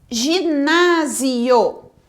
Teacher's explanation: o na é a sílaba tônica